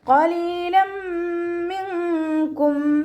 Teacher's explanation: നൂനിൻ്റെ സൗണ്ടിനെ അവിടെ മറച്ചു വെക്കുകയും ചെയ്യുക, അതോടൊപ്പം തന്നെ മണിക്കുകയും ചെയ്യുക. · തെൻവീനിനെ മീമിലേക്ക് ലയിപ്പിച്ച് ഉന്നയോട് കൂടി ഓതി കൊടുക്കുക. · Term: ഇഖ്ഫായിൻ്റെ, ഇദാം ബിഉന്നയുടെ